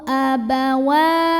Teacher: Karena ada baris fathah panjang pada huruf waw, maka cara bacanya dipanjangkan wawnya ini 2 harokat saja. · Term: mad tabi'i